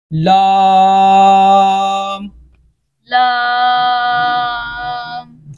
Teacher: और ये जहन में रखना है कि इसको अदा करते वक्त हमने नाक में आवाज़ जो है ना वो नहीं जानी चाहिए।